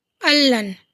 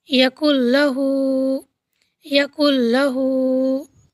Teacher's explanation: جب نون ساکن اور تنوین کو ہم لام اور را سے ملائیں گے تو نون ساکن اور تنوین کی آواز ظاہر نہیں ہوگی، ایک طرح سے سائلنٹ ہو جائے گی، ٹھیک ہے، سائلنٹ ہو جائے گی، یہ سمجھ لیں۔ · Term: ادغام تام